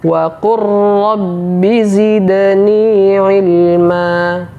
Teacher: huruf lamnya tidak lagi kita baca yang kita baca adalah huruf ro yang ditasdid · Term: idgham mutaqoribain, Idgham mutaqaribain